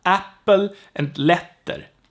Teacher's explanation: The T is short in English, but in Swedish it has to be long. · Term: long consonant